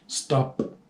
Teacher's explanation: ese sonido de la P no produce acá ninguna vibración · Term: voiceless